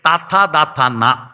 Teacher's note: നാവിന്റെ അറ്റം പല്ലുമ്മത്തൊട്ട് ദന്തത്തിൽ തൊട്ട് വ്യഞ്ജിപ്പിക്കുന്ന ദന്ത്യം